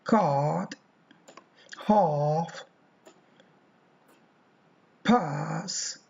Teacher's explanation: The long vowel A Example words: card, half, pass. This is an open vowel in the region of cardinal vowel number 5.